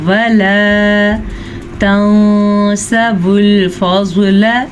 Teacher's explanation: نون ساکن کے بعد سین جو کہ حروف اخفاء میں سے ہے تو آپ اخفاء کر لیجئے گا اور غنہ بھی کر لیجئے گا